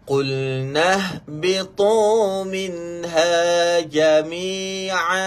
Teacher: Ta hujung lidah sentuh di belakang gigi, di belakang gusi atas.